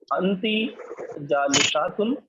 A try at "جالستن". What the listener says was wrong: ہاں یہاں پر الف نہیں لگانا.